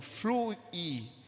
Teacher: O I não sai junto com o U na nossa pronúncia. Fluir. Existe aqui um hiato, porque estão em sílabas separadas.